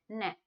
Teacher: दांतों के ऊपर वाले मसूड़े पे लग रहा है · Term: वर्तस्य व्यंजन